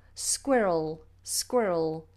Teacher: it ends with that dark L so the tongue tip has to come up to the roof of the mouth